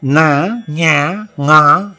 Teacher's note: the sound doesn't only come through the mouth, there is a part of the air is pushed through the nose, so it has got a little bit characteristic of a nasal effect.